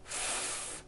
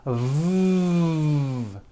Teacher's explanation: the F sound is unvoiced and sounds like this F and the V sound is voiced and sounds like this V correctly pronouncing these sounds will make